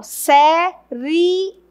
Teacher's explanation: veja que o I é o menos forte. E o E é o mais forte. Então, aqui eu tenho o encontro de uma semi e de uma vogal, ó. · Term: ditongo